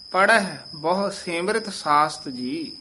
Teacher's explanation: ਪੜਹੈ ਹੈ ਦੇ ਦੁਲਾਵਾਂ ਨਹੀਂ ਲਾਉਣੀਆਂ ਲਘੂ ਉਚਾਰਨ ਕਰਨਾ